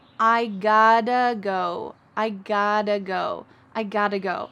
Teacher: I have got to go. But when we reduce that, we cut out have, and got to becomes gotta. But we don't pronounce the T, so we're going to reduce it one more time, and in American English, the T's change to a D sound. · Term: reductions